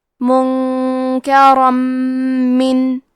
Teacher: را پہ تنوین زبر ہے، پھر حرف المیم آتا ہے کلمت من، یہاں حکم ہے ادغام بغنہ، تو ہم یہ حکم کو غنہ اور تشدید کے ساتھ ادا کریں گے۔